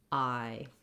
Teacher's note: What's important to know here is that when we're saying the I sound, we want to hold it longer and our tongue is gliding between two positions. So I start with my mouth more open, similar to how I say ah, but with the tongue a little more forward. Then I close and relax. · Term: I diphthong